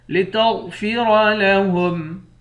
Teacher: غین اور را دونوں کو موٹا پڑیں گے